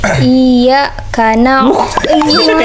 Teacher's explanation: Kasih tekanan di ya-nya.